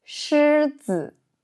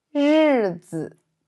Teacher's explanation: Et ensuite, on va pratiquer ch et j. La différence entre les deux est la vibration des cordes vocales, plus forte pour j.